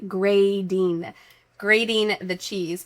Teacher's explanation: there's a T in it, but we're going to make it sound like a D, grating. Grating the cheese, because in American English, we love for T's surrounded by vowels to sound like a D sound.